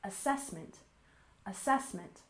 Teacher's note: And assessment, we stress the second syllable, assessment, assessment